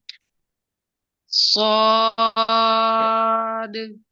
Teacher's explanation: سواد کو جو زبان کی نوک ہے اس کو جو سامنے والا دانت ہے اس کی طرف لگانا ہے